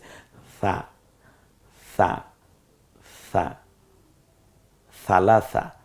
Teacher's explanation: জিহ্বার আগা সামনের দাঁতের আগার সাথে মিলিয়ে আপনি স বলুন, দেখবেন নরম হয়ে গেছে। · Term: নরম আওয়াজ